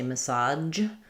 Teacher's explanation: Some say massage and some say massage with a j sound.